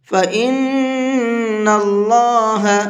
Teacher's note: فَإِنِ اس طرح سے فَإِنَّ اللَّهَ، نون کے اوپر تشدید ہے تو یہاں پر غنہ کریں گے اور اللہ کے لام کو منہ بھر کے پڑھیں گے، اس لیے کہ اللہ کے لام سے پہلے زبر ہے